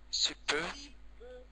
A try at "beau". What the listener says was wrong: beau, Non, ce n'est pas peu, c'est beau. Non, beau.